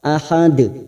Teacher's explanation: Di sini ada tanda waqaf lazim ya, ini namanya waqaf lazim di akhir kalimat di ayat 5. Ahad ujungnya jangan lupa dipantulkan karena ada huruf dal yang mati di akhir kalimat dan dibaca waqaf ahad.